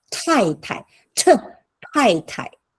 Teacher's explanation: correct yourself with Tai, which is aspirated